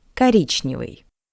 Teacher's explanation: O is unstressed. That's why we pronounce it as a. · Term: unstressed O